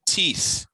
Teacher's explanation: it's a voiceless th at the end of the word